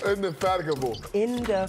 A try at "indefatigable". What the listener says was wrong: Get that G in there. It's trouble.